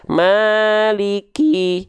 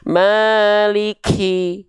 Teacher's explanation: kaf itu bukan mengalir nafas, tapi kaf itu hanya berupa percikan nafas saja. Dipercikan nafasnya, ya.